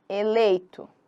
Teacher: Eu tenho o meu E que é forte e o I que é fraco. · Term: decrescente